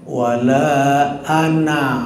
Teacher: Makanya bacanya wala ana kan nggak panjang, nggak ana itu nggak. Jadi dilewat alifnya, hilang alifnya, ya hilang alifnya, tidak panjang kalau di wasol itu.